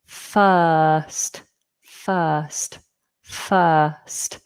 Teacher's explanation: We don't pronounce the R. The I makes up the the vowel sound uh uh f first.